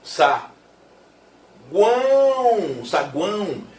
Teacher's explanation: Um tritongo nasal. Semivogal, vogal, semivogal.